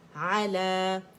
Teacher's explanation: لام کی آواز کو اسٹریچ کر رہی، الف مدہ بن رہا ہے